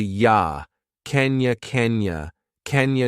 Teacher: you can make that unstressed too and reduce it to yah